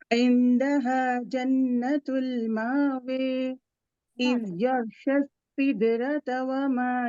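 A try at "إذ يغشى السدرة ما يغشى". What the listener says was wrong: نہیں واو نہیں ہے بس بارک اللہ فیکی اذ یغشی السدرۃ ما یغشی ٹھیک ہے تھوڑا سا دیکھیے بارک اللہ فیکی انوشا نفیسہ رمائسہ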